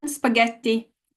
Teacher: the stress goes on the one before last syllable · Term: penultimate syllable